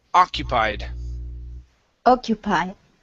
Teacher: so our stress is at the very beginning occupied